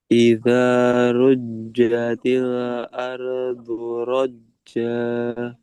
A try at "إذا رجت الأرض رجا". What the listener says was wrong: Masih kurang. Coba lebih ditekan lagi. Ruja. Idza rujjatil ardu rajja. Rajja.